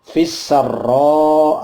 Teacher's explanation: ketemu al-ta'rif yang ketemu sin, namanya al-syamsiyah, langsung fi-nya masuk ke sin, menjadi fis